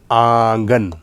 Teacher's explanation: एक नून तो नाक में बोला जा रहा है और एक नून अलल ऐलान बोला जा रहा है, यानी पूरा नून बोला जा रहा है